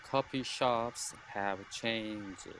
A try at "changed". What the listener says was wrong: Look, but I didn't hear that little sound at the end. So changed. And then remember, you want to get that really slight dip. So changed. It's a little different. Changed.